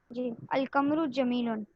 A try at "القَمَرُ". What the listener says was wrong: अल कमरू, अच्छा कमरू नहीं है ये है क़मरू, मीम पे भी ज़बर है। अल कमरू जमीलुन, ठीक है